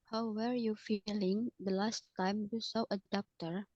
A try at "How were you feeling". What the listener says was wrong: How were. Bukan where. Were.